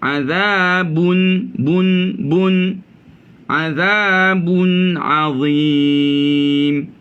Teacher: Tanwin tu ibarat ada nun selepasnya. Jadi bunyinya bun.